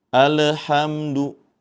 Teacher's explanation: Alhamdu seperti itu. Namun dengan cara dialirkan pertengahan karena mempunyai sifat tawas atau bainiah · lamnya bertanda sukun maka hati-hati Jadi jangan sampai dipantulkan juga dalam membacanya. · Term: alif lam qamariyah